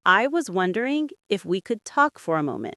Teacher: The stress falls on one in wondering and mo in moment.